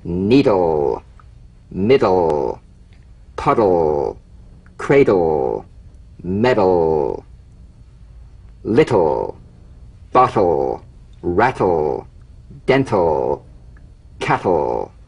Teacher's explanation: Tongue tip to gum ridge consonants. Bounce the D or T drum bead off the gum ridge and return there immediately for the L. Feel the typical drum beat damped in the tip of the tongue as the D or T click slides quickly into the L. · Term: DL and TL cognates